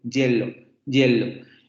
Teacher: se cierra más que en la I, y produce esta sensación de una consonante que se acerca a esta I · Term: la semiconsonante de I